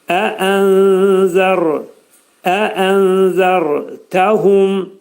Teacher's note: Ra'nın məxrəci. Demək, dilimiz yuxarı üst dişin altında olan ətə dəyir və qalın ra deyilir.